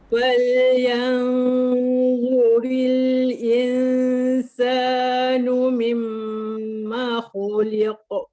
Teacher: Fal yanzuril tu rendah pangkal lidah sebab tu nampak lapang kan. Mimma khu angkat balik sebab tu bunyi tebal.